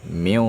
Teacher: dibaca ikhfa ikhfa dengan dengung yang tebal